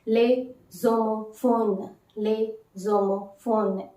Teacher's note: s will not be pronounced and there is a linking of the vowel and the consonant